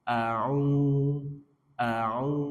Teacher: Qul Qul a'u a aksal halki tenggorokan bawah, ain tengah tenggorokan wastul halki, a'u a'u ainnya berharokat dhammah ketemu wawu sukun mad tabi'i, maka a'u-nya dua harokat